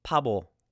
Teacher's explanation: The first letter sounds like a P, but the second one sounds like a B.